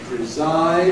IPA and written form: prɪˈzaɪd (preside)